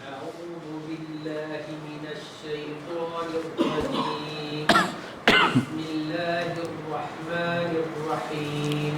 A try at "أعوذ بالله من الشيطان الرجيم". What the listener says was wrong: جی عین کو تھوڑا اور دبائیے. اعو اعو عو عو.